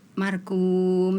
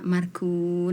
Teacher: Misalkan akhir ayat nun, hurufnya harusnya dibaca nun tapi ternyata dibaca mim mati